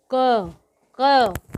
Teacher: हमारे गले में जो हमारी जीव्या है वो गले में इसका स्पर्श हमें महसूस होता है, इसलिए इसको हम कंठ में बोला जाता है। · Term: स्पर्श व्यंजन